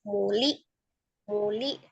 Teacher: Oh, itu kan hamzah sukun. Hamzah sukun dari tenggorokan bagian bawah.